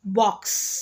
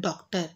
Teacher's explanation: अंग्रेजी शब्द के उच्चारण में आ जो है या ओ के बीच का उच्चारण इसके लगाने से शुद्ध रूप में बोला जा सकता है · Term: विवृत